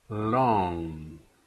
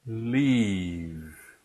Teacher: the tip of the tongue touches the gum ridge behind the upper teeth the air stream flows through the sides of the tongue don't round your lips when you're saying the l sound this